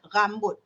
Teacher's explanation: Rin dia kuat sebab dia menggunakan uvula, anak tekak. Macam bunyi Jerman dalam cakap orang Kedah ni. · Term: bunyi rin